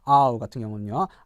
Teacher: 아에서 시작해서 우로 이렇게 끝나죠